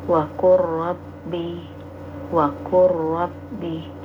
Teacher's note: Jadi huruf yang pertama itu lebur ya, tidak dinampakkan secara sempurna ya, tapi langsung ke huruf yang kedua. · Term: idgham mutaqorbain, idgham mutaqaribain